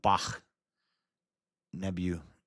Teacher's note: So it should be short and indistinctly pronounced. The K is a guttural sound like C in German.